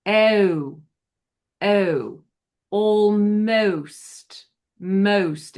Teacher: The long O with this accent begins with eh · Remember that the two sounds with this British O are eh and oo.